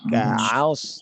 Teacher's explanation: ain yang bertemu dengan shod dijaga dia jangan bergabung ketebalannya